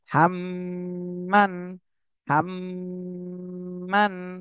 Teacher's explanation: হরকত হরকতের বামে মিমে তাসদিদ হয়েছে এখানে ওয়াজিব গুনাহ করতে হবে